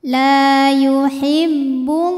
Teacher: Kemudian ada hukum alif lam yang dinamakan dengan alif lam syamsiyah, karena alif lam menghadapi huruf syamsiyah yaitu huruf lam, maka alif lamnya tidak dibaca atau bacanya masuk.